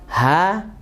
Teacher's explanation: yaitu di pangkal tenggorokan di pangkal tenggorokan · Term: H besar